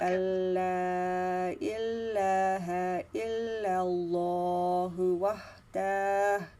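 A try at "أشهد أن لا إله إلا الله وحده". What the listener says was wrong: Wahdahu. You don't need to stop. No, no. Sister, that's not the comma. That's the dhamma. And there is no stopping sign.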